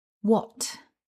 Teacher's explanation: And you probably noticed that we don't pronounce the letter H. We write the word with an H, but in current English use, that H isn't pronounced.